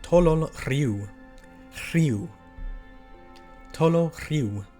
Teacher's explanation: The RH sound, which, as we talked about before, you kind of switch them around. It's that voiceless H that comes before the R. And the R in this case needs to be rolled